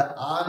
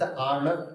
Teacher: जणेकरी येत आन आती तरी तुझीच आण दोन शब्द आहे बरं एकामध्ये दंत्य न आहे आणि एकामध्ये मूर्धन्य न आहे म्हणजे एक तुम्हाला असं नाही कळणार तर एक बाणाचा न आहे